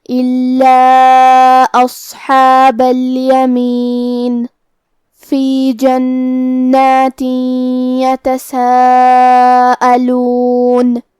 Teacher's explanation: نون پہ تشدید ہے تو ہم 2 حرف کے برابر حرف النون کو پڑھیں گے